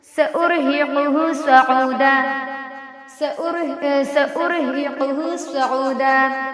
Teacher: را ساکنہ سے پہلے پیش ہے، را جو ہے یہاں پہ پر ہوگی